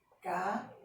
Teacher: Fé foi a sílaba que eu coloquei mais força. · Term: sílaba tônica